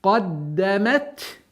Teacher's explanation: Каф твердый, даль мягкая.